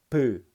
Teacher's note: 위아래 입술을 갖다가 딱 막아놨다가 펑 입술을 터뜨리면서 발음하기 때문에 입술 소리입니다. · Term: 양순음